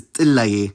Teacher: the first person singular suffix e will add an epenthetic y before it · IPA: [j]